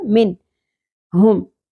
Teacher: نون ساکن کے بعد حروف حلقی میں سے ہا آ گیا، اظہار ہوگا، من نہیں پڑھنا، من ہم۔